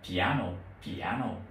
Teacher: Nhưng mà bên tiếng Anh thì sẽ tách ra, sẽ không có đọc là piano mà đọc là piano, piano. Nhấn trọng âm ở âm tiết thứ hai.